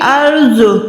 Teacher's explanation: را جو ہے ساکن ہے لیکن اس سے پہلے زبر ہے، تو یہ ٹھیک یعنی موٹی ادا ہوگی، پر ادا ہوگی۔